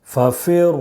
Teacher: را واو پیش رو، ففر. را مشدد پر پیش ہے، اس لیے را کو پر پڑھیں گے